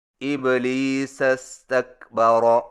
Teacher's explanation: یعنی استکبر کا حمزہ گر جائے گا